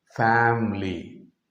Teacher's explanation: instead of three syllables you reduce that i and you pronounce as if it is a dye syllabic word